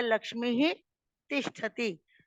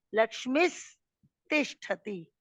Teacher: अभी जब बोलेंगे तो लक्ष्मी ही बोल रहे हैं, उसमें विसर्ग है, स नहीं आधा।